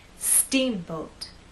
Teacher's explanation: the first part of the word is the stressed part so when we say Steamboat I want the first part to be loud and the second part to be softer